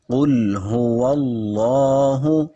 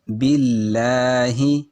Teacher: باللہ، لفظ اللہ کا رول یہ ہے کہ لفظ اللہ سے پہلے اگر زبر ہو یا پیش ہو تو اس کو خوب موٹا کر کے پڑھتے ہیں، جیسے قل هو اللہ، اور اگر زیر آ جائے تو باریک پڑھتے ہیں، جیسے باللہ، اس کو باللہ نہیں پڑھیں گے۔